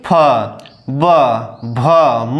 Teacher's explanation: देखिए प, आपका प यानी दोनों ओठ टच हुए, ये दोनों ओठ आपके बोलिए, देखिए टच हुए, प, बोलिए फ, ब, भ, म, यानी कि जितने भी अक्षर हैं सब क्या होंगे, ओठ आपस में क्या होंगे, ओठ आपस में टच होकर आवाज निकालेंगे। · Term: ओष्ठ